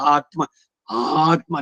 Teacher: ಆತ್ಮ ಅನ್ನೋ ಪದ ಇದೆಯಲ್ಲ ಅದರಲ್ಲಿ ಆ ಆ ಅನ್ನೋದು ಯಾವಾಗಲೂ ಅನುದಾತದಲ್ಲಿ ಇರಬೇಕು